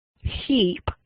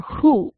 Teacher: the heap, your lips are spread wide for the H. But for hoop, because of the oo, the H is produced with your lips puckered, and that's called co-articulation.